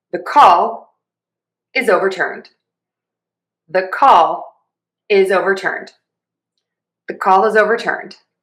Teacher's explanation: So, I'm going to have low, high, low, low, high. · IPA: /ðə kɔl ɪz ˌoʊ.vɚˈtɝːnd/